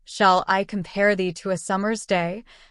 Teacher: consists of five pairs of alternating stressed and unstressed syllables per line